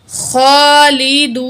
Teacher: خا کھڑا زبر خا، لام زیر لی، دال پیش واو دو، واو ساکن ہے، پچھلے الفاظ پہ پیش ہے، واو مد ہے، 1 کاؤنٹ کھینچ کے پڑھیں گے. خا کو ہم نے موٹا بھی پڑھنا ہے، کھڑا زبر بھی ہے، 1 کاؤنٹ کھینچیں گے. خالدون، نون زبر نا، خالدون.